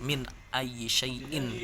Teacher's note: nun mati ketemu dengan alif dan itu nun-nya tuh dibaca dengan jelas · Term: izhar